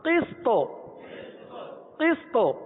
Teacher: آخر میں تو ہے، تو ساکن پہ قلقلہ ادا ہوتا ہے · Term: قلقلہ صغرا